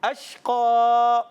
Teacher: قاف موٹا ادا کریں گے، حروف مستعلیہ میں سے، موٹے حروف میں سے · اور پیارے بچوں دیکھیے یہاں پر زبر ہے، جب اس پر وقف کرتے ہیں تو کھڑا زبر ہو جاتا ہے، یعنی الف سے اس کو بدل دیتے ہیں